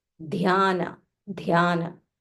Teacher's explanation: So, and it is only half matra. So you can say dhyana, dhyana with an aspiration. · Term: Mahaprana dha